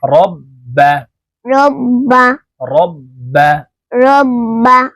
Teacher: তাশতিদওয়ালা হরফ দুইবার উচ্চারণ হবে একবার পূর্বের হরকতের সঙ্গে আরেকবার নিজ হরকতের উচ্চারণ হবে